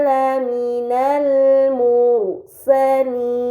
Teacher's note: terdapat ra sukun sebelumnya harokat dhammah yang berada di huruf mim, maka ra tersebut harus dibaca secara tebal